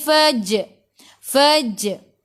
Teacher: Lantunannya kecil, qalqalah sughra.